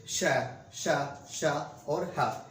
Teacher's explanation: जैसे कि श, श, श और ह, इसमें क्या निकलेगी, मुंह से वायु बहुत अधिक निकलेगी, इसलिए नाम क्या दे दिया गया है इसका, ऊष्मीय व्यंजन